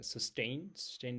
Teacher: the second syllable is stressed